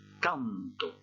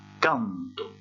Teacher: j'ai prononcé plus fort cette première syllabe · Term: accent tonique